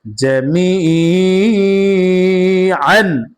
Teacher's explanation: জেরে পরে ইয়া সাকিন মাদে হরফ এক আলিফ টান হবে, মাদ্দে তবাই। আইন আলিফ দুই জবর আন, জামিআন।